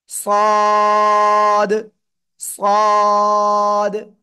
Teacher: কি মোটা আওয়াজে পড়তে হবে সদ সদ চার আলিফ টান হবে জিহ্বার আগা সামনে নিচে দুই দাঁতের পেটও আগার সাথে লাগবে লাগিয়ে আমরা কি করবো উচ্চারণ করবো সদ চার আলিফটা নিয়ে ক্লিয়ার